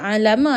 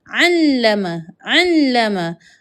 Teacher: Jadi bila kalau kata tak ada ni, kita akan baca alama. Tetapi bilaa ada syaddah ataupun sabdu kita kena jadikan lam ini ada dua.